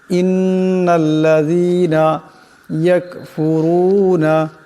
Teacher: ইন্নাল্লাযীনা ইয়াকফুরুনা, এখানে রা আছে, রার উপর পেশ আছে, রাকে মোটা আওয়াজে পড়তে হবে